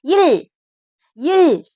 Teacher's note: கீழ் நோக்கிய இல். அந்த நாக்க மடக்கி சொல்லணும்